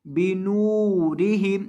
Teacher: نون کو تھوڑا سا لمبا کریں گے کیونکہ اس کے بعد واو مدہ ہے